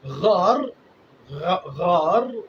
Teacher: غار اور کلاسیفیکیشن دیکھیں آپ، پوری دنیا کے اندر عربی زبان کی یہ خوبصورتی آپ کو کہیں دکھائی نہیں دے گی کہ خود آپ کے حلق کے اندر جو صورتحال بنے گی اس کو ڈیفائن کر جائے گا وہ لفظ. غار، غار جب غین کا لفظ آپ استعمال کریں گے تو وہ حلق آپ کا جو ہے وہ سکڑ جائے گا